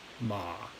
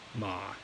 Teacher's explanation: don't worry as much about the rising aspect of the third tone. Just make sure you're getting down there low.